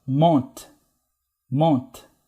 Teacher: Terminou em T, mas antes desse T veio uma vogal nasal. On, né?